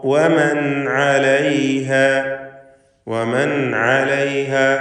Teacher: സക്കിനത്തായ നൂനിനെ ഇൽഹാർ ഹൽഖി നൽകി മണിക്കാതെ വെളിവാക്കുക. ശേഷം ഹൽഖിൻ്റെ ഹർഫായ ഐൻ വന്നിട്ടുണ്ട്.